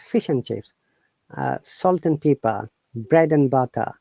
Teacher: when you're pronouncing quickly, the and becomes an